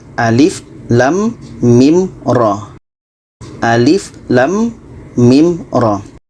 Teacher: ini Alif ini pendek saja sedangkan lem ini panjangnya 6 harkat mim 6 harkat RO dua harakat Alif pendek lam dengan mim 6 harakat